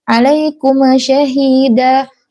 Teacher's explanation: Dalam kata alaikum syahida ini adalah mim sukunnya jangan dipantulkan karena huruf mim itu bukan huruf qalqalah. Jadi ditahan biar tidak mantul, jangan cepat-cepat.